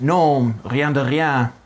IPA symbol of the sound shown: ʁ